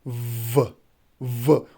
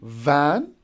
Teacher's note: another labiodental is voiced one, which is pronounced as v, which is voiced.